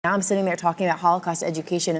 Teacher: There was completely reduced.